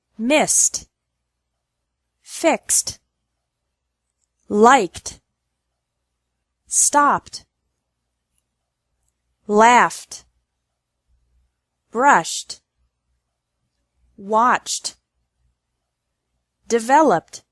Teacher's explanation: e d is pronounced like T with no extra syllable after verbs ending in s x k p f sh and CH sounds